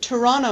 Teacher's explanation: in Canada Toronto usually the tea disappears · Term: disappearing tea